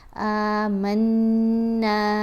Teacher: غنہ آواز ناک میں جاتی ہے اور ایک حرکت کے برابر ٹھہر کر پڑھا جائے گا۔ الف کو کھینچ کر پڑھیں گے، نون کو بھی کھینچ کر پڑھیں گے۔